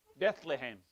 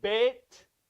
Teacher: in sephardic hebrew there is no th it's t